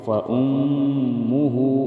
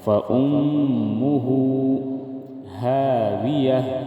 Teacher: فَأُمُّهُ هَاوِيَةٌ، فا زبر فا، حمزہ میم پیش میم پیش مو، ہا الٹا پیش ہو، فَأُمُّهُ، میم مشدد میں ہم غنہ کریں گے